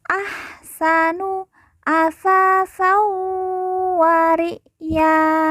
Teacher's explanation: San bertemu dengan huruf wawu, maka tanwin dileburkan langsung masuk ke huruf wawu, kemudian ditekan, ditahan 2 harokat dan didengungkan.